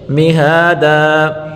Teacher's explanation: دو زبر کی تنوین پر وقف کریں گے تو وہاں ایک زبر اور ایک الف پڑھیں گے